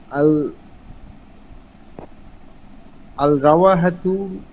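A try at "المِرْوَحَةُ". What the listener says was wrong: আল রাওয়া হয়ে গেছে, আগেন এটা মিরওয়াহাতুন বলছিলেন। আরে আরে এখানে একটা মিম আছে, মারওয়াহাতুন, একটু আগে মিরওয়াহাতুন বলছিলেন।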